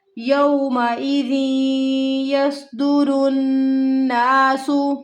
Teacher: यौमइज़ि या वाव ज़बर यो की आवाज़ यहाँ पे नहीं आएगी। यह हरूफ लीन है